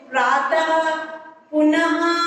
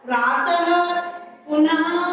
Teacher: इसका उच्चारण हल्के हाँ की भांति होता है, हल्के हाँ की भांति होता है। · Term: विसर्ग